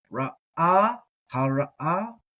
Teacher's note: get that guttural, that stop in there